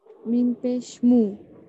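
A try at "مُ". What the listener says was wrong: मुंह पढ़ेंगे आप, मो नहीं पढ़ेंगे, शायद मुझे मो सुनाई दिया, मो पढ़ेंगे।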